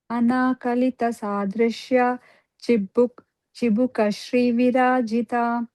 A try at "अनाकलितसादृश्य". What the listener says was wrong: Try to contain it, that sadrishya, okay, not elongate, okay.